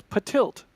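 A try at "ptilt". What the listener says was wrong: But tilt. You don't pronounce the P. It's just tilt, but it's tilt. Yeah, it's like pterodactyl.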